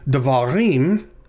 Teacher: the last syllable is the one that is tonic it's the one that receives the emphasis